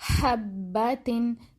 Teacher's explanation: جیسے ایک اور ورڈ ہم پڑھتے ہیں حبتن، تو با پر شد ہے نا، تو ہمیں بالکل اچھے طریقے سے پتہ چل رہا ہے کہ با جو ہے نا وہ ہمیں دونوں ہونٹوں کے ملانے سے ادا ہو رہا ہے۔